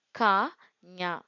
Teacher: மேல்வாய் அன்னத்தின் அடியை நாவினது அடி பொருந்த பிறக்கும் எழுத்துக்கள் க ஞ மேல்வாய் அன்னத்தின் இடைப்ப பகுதியை நாவினது இடைப்பகுதி பொருந்த பிறக்கும் எழுத்துக்கள்